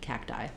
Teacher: not a strong B but you don't want cacti either no we don't let any air out on either the K or the T · my T is going to be somewhat unaspirated so it sounds a little bit like a d